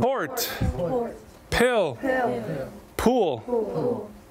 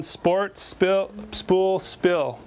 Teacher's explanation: There's two different pronunciations of the P, even though in our mind there's just one letter. En inglés, deben poner mucho aire. O sea, debe salir mucho aire con la P.